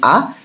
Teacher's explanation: সম্মুখ স্বরধ্বনি যেটা ফ্রন্ট, পশ্চাৎ, এবং এখানে কেন্দ্রীয় স্বরধ্বনি আ, অর্থাৎ জীব সামনের দিকে এগোবেও না পেছন দিকে পেছবেও না, মাঝামাঝি জায়গায় অবস্থান করবে